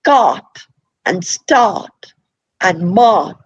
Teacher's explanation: we say cart and start and M but we don't actually pronounce the r at all